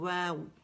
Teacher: آپ میں نارمل ہونٹ ایسے ہوتے ہیں نا، پھر جب آپ اس کو گولائی دیتے ہیں، واو کے لیے کیا ہوتا ہے، دونوں ہونٹوں کی گولائی سے ادا ہوتا ہے اور تھوڑا سا بیچ میں گیپ ہوتا ہے